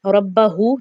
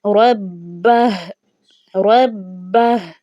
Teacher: ये जो हा उल्टा पेश है हमने इसकी हरकत को गिरा देना है, बाकी सिर्फ जो है हा की वॉइस बाकी रह जाएगी, यानी कि हमने हरकत को गिराना है जबकि हा को हमने ज़ाहिर करना है।